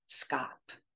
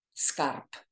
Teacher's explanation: instead of pronouncing that B as a B, it turns into an unvoiced phoneme P